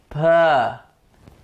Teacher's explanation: I obstructed the sound of coming out with my lips to say p.